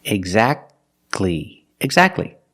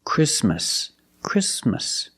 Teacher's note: the t is silent when it's between consonants